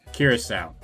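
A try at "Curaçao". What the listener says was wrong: Not cure, just curacao.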